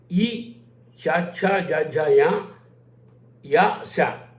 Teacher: తాళవ్యములు అంటారు వీటిని, అంటే దవడల నుంచి వస్తాయి